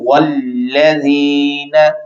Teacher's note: یا ساکن، یا سے پہلے زیر یا مدہ، لہذا اس کو آپ لمبا کر کے پڑھیں گے